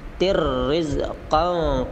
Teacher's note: tanwin bertemu ra, itu disebut idgham bila gunnah